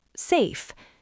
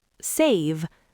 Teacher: Let's look at the words safe and save. Safe ends in an unvoiced F. The vowel is short. Safe. Save ends in a voiced V. The vowel is stretched. Save. I feel safe.